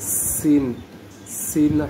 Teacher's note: সিন হরফটা শীষ দিয়ে জিহ্বার দাঁতের ফাঁক দিয়ে জিহ্বার সাহায্যে বের হবে